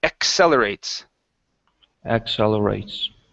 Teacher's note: with the double C here, the first one is ek, the next one is cell. Accelerates.